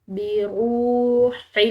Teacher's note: را کے بعد واو ساکن ہے تو ایک الف کے برابر اس کو کھنچاؤ دیں گے